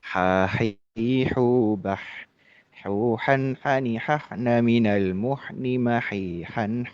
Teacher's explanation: huruf ha itu pengucapannya adalah atau tempat pengucapannya itu adalah tenggorokan tengah, bagian tengah itu ya